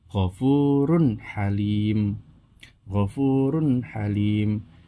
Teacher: ada dhammah tanwin, setelahnya huruf hamzah, maka dibaca jelas, tidak boleh mendengung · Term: idhar